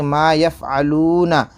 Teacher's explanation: الف سے پہلے زبر الف مدہ تھوڑا کھینچ کر پڑھیں